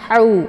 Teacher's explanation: merupakan ha kecil ya Atau biasa dikenal dengan ha pedas jadi Posisinya itu di tengah tenggerokan ya sejajar dengan huruf Ain